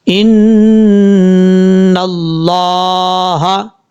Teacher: نون کے اوپر شد ہے غنہ کریں گے ایک الف کی مقدار، آگے لفظ اللہ سے پہلے نون کے اوپر زبر ہے، لفظ اللہ کو بھی پر پڑھا جائے گا یعنی موٹا پڑھا جائے گا، نون کے بعد جو الف ہے پھر لام ہے اس کو چھوڑ دیں گے، جس لام کے اوپر شد ہے اس کو فل موت پڑھا جائے گا، پر پڑھا جائے گا۔